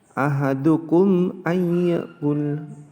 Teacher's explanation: mim sukun diikuti huruf alif atau hamzah, maka hukum bacanya adalah idhar safawi atau jelas di bibir. Ahadukum, nah mimnya jelas di bibir.